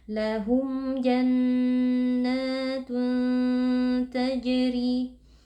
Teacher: Ada tanwin yang bertemu dengan huruf ta, hukumnya adalah ikhfa hakiki. Cara membacanya, tanwinnya dibaca samar dan berdengung. Tajri, huruf jim sukun, hukumnya adalah qalqalah sughra karena posisinya ada di tengah-tengah bacaan.